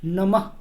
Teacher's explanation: नमः तो यहाँ भी म के बाद में ह का उच्चारण होगा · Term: विसर्ग